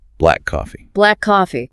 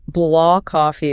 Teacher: Might become blah coffee. The K sound softens or almost disappears. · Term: consonant-to-consonant linking